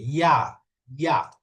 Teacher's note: ইয়া জিহ্বার মাঝখান উপরের তালুর সাথে লাগবে ইয়া। ইয়া।